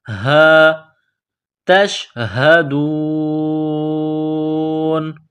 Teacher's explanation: یہ گول ہا ہے، منہ سے صرف ہوا نکالنے کی طرح اس کو پڑھتے ہیں۔